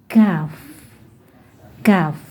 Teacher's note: masih tetap di pangkal lidah, yaitu lidah kita menuju ke langit-langit keras tetap di pangkal lidah. Hurufnya adalah kaf.